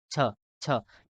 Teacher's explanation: छ बोलने के लिए हमारा जीभ जो है वो तालु को टच करता है। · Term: तालव्य